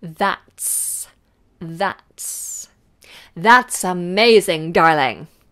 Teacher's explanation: let's lose that final T throw it away